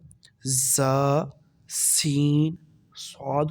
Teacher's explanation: زا، سین، صاد کو ادا کرتے وقت سیٹی کی طرح تیز آواز نکلتی ہے۔ اسی طرح سین کو جب ادا کریں گے تو باریک آواز کے ساتھ، اور صاد کو پر یہ پڑھیں گے یعنی موٹا پڑھیں گے۔